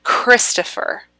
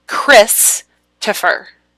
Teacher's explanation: Christopher the emphasis goes on the first syllable